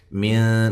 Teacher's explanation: نون ساکن کا اخفا ہے باریک